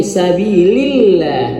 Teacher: Tipis karena dia lam jalalah diawali dengan kasrahnya ya.